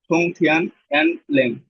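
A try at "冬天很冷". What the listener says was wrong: হ্যান ল্যাং না লাং, লাং।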